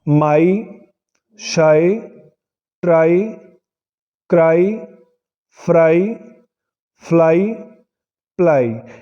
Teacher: ਜੋ ਵਾਈ ਹੈ ਉਹ ਲੌਂਗ ਆਈ ਭਾਵ ਵਿਹਾਰੀ ਦੀ ਆਵਾਜ਼ ਦੇ ਰਿਹਾ, ਥੋੜ੍ਹਾ ਲੰਬਾ ਖਿੱਚ ਕੇ ਬੋਲਦੇ ਹਾਂ ਇਸ ਨੂੰ ਅਸੀਂ। ਜਿਵੇਂ ਇਹ ਸਾਰੇ ਸ਼ਬਦਾਂ ਵਿੱਚ ਵਾਈ ਆ ਉਹ ਅਖੀਰਲਾ ਅੱਖਰ ਆ ਸਾਡੇ ਕੋਲੇ, ਤਾਂ ਵਾਈ ਤੋਂ ਬਿਨਾਂ ਹੋਰ ਕੋਈ ਵੀ ਵੋਵਲ ਨਹੀਂ ਹੈ ਸਾਡੇ ਕੋਲੇ।